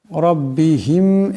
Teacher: এখানে রার উপর জবর আছে, এই রাকে মোটা আওয়াজে পড়তে হবে।